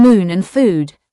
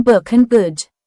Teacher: It can make the long ooh sound as in moon and food or the short oo sound as in book and good.